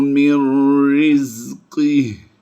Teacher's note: नून साकिन के बाद जब भी हुरूफ यरमलून में से कोई हरफ आए तो हम नून साकिन को अगले हरफ यानी यरमलून हरफ में मुदगम कर देते हैं